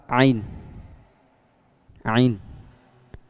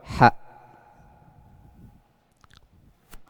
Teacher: letak makhraj ain dan ha itu berada di wastul halqi, yakni di tengah-tengah tenggorokan